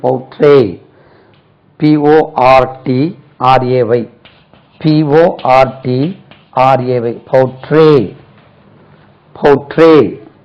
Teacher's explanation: Stress lies on second syllable.